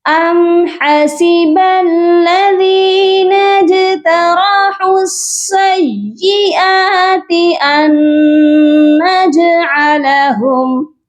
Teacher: یہاں پر ہم نے حمزہ کو نون مشدد کے ساتھ ملانا ہے اور یہاں غنہ بھی کیا جائے گا، کیونکہ نون مشدد پر ہمیشہ غنہ ہوتا ہے